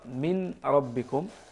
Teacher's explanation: الملاحظة الأولى عودة صحتها، من ربكم، سارعوا إلى مغفرة من ربكم، النون تدغم في الراء، قولوا سارعوا إلى مغفرة أو مغفرة من ربكم مع إدغام النون في الراء إدغاما كاملا